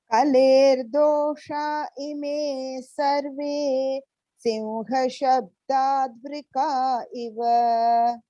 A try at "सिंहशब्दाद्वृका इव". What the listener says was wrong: Sim, you said. Sim shabdatu. Simha.